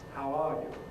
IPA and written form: haʊ ˈɑː ju (How are you?)